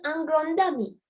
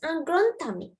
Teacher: D is pronounced as T. You have to pronounce it as T. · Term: T sound